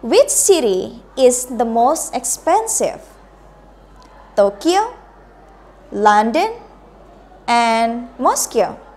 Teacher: Jadi turun untuk yang terakhir tetap. Pilihan pertama menggunakan raising berarti naik. Pilihan kedua menggunakan raising juga berarti harus intonasinya naik juga. Yang terakhir turun. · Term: raising intonation